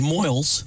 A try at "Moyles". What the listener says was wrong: Moyles. Not Moyle. There is a difference. It's Moyles.